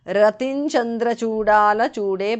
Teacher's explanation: Anuswara changes to nya there.